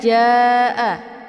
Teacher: ini dibaca panjang, boleh 4 atau 5 kali ketukan. Karena ini dinamakan dengan mad wajib muttasil.